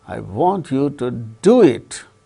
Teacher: importance is given to the doing of the thing.